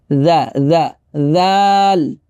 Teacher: একেবারে নরম করে উচ্চারণ করতে হবে, হ্যাঁ। জিহ্বার আগা দাঁতের আগা একসাথে লাগবে,